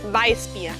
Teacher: la W en Weissbier con los dientes en el labio.